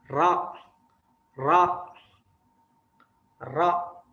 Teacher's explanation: makhrajnya adalah punggung lidah di belakang gusi atas. Jadi punggung lidah yang ini, antum bisa lihat ya, berada di gusi atas.